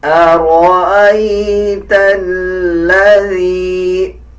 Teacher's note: شد کا مطلب ہوتا ہے جب کسی الفاظ کے اوپر شد آ جائے اس الفاظ کو مضبوطی کے ساتھ ادا کیا جائے اور پچھلے الفاظ کے ساتھ ملا کے پڑھا جائے. اب لام کو تا کے ساتھ ملا کے پڑھا جائے گا اور لام کے اوپر مضبوطی دی جائے گی